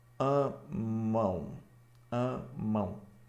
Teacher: a o m é apenas uma letra o som é esse U semivocal